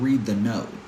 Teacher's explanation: Even though she's screaming, pitch is down at the end of the sentence. Usually when we have a statement, we tend to go down in pitch.